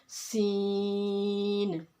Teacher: नोक ज़बान ऊपर और नीचे के दोनों दांतों के दरमियान जब आएगी तो सीन अदा होगा। सीन में भी सीटी की आवाज़ पैदा करेंगे।